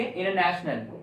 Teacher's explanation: जब भी टी N को फॉलो करता है तो वहां पे टी साइलेंट हो जाता है। जैसे फॉर एग्जांपल अगर हम बोलते हैं इंटरनेशनल, राइट, सो इंटरनेशनल में एन टी जो है वो एन को फॉलो करता है, वहां पे पढ़ेंगे इंटरनेशनल, राइट।